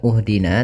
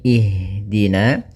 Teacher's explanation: maka kita baca Hamzah di awal hamzatul wasalnya itu kasrah maka kita baca di sini bukan uhdina tapi ihdina Kemudian pada lafal ha usahakan di sini mengalir nafasnya dan lembut